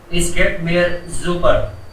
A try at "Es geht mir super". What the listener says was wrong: इस तो नहीं बोल रहे हो ना, एस बोल रहे हो ना।